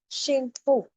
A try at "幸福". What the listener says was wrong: 不 是 福 幸 福 第 二 声